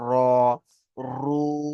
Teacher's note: রয়ের উপরে যদি জাবার এবং পেশ আসে, তাহলে সেই রকে পুর করে পড়তে হবে, অর্থাৎ মুখটা গোল করে